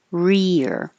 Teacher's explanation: Your tongue is staying in the E, very high position. Rear. It goes back for the R, up for the E, back for the R.